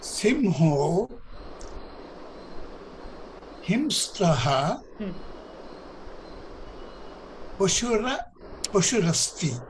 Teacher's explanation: The Visarga has become an O.